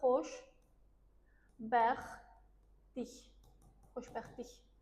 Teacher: Tələffüz eləsək, artıq t-nı deməməlisən. T səsi olmayacaq orada. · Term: t səsi düşür